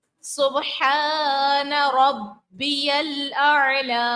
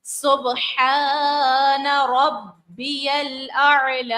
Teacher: با کو ظاہر کریں گے، الف مدہ ہے، کھینچیں گے، با پھر جماؤں کے ساتھ ادا کریں گے کیونکہ تشدید ہے، اور اس کے بعد جو ہے عین کو ظاہر کریں گے اور لام کو کھینچیں گے.